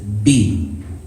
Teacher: the B it comes from the lips